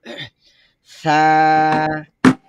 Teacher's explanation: জিবার আগা উপরের দাঁতের আগাতে স্পর্শ করবে এবং উচ্চারণ খুব সফট। আমরা উচ্চারণ করি লম্বা বেকালিফ সা, বাতাস বের হবে ভিতর থেকে পর্যাপ্ত পরিমাণ।